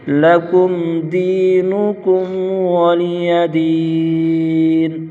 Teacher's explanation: ولا عابدون ما أعبد ولا أنتم عابدون ما أعبد أعبد لكم دينكم ولي دين لكم دينكم ولي دين لکم اظہار شفوی ہوگا، غنہ نہیں کریں گے، دی پر یا مدہ، کم پر اظہار شفوی غنہ نہیں کریں گے، دین پر مد عارض، یہاں پر تین الف کھینچ کر پڑھیں گے